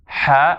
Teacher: the ha happens at the middle of the throat, above the vocal cords.